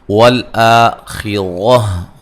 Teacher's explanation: کو پہلی مرتبہ دیکھ رہے ہیں۔ والآخرہ آ مد اصلی ہے، را کو موٹا ادا کریں گے، خا کو موٹا ادا کریں گے